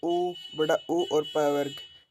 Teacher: ये ओष्ठ की सहायता से बोले जाते हैं, इसलिए ओष्ठ्य कहलाते हैं।